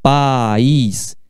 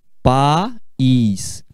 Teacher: Quando você fala país, você pronuncia essas vogais em sílabas diferentes. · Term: hiato